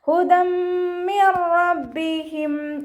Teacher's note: തെൻവീനിനെ മീമിലേക്ക് ലയിപ്പിച്ച് ഉന്നയോട് കൂടി ഓതിക്കൊടുക്കുക കേട്ടോ. ഉന്ന എന്ന് പറഞ്ഞാൽ നല്ലോണം മണിച്ചിട്ട് ഓതിക്കൊടുക്കുക.